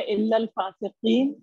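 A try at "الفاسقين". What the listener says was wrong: الل نہیں ہے, صرف الفاسقین.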